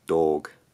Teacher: I think this speaker uses a slight diphthong, so the vowel quality doesn't stay identical the whole way through.